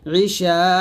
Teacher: এটা মধ্যে মুত্তাসিল এখানে চার টান দিতে হবে